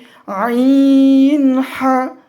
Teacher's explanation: হলকের মধ্যখান হইতে উচ্চারিত হয় আইন হা।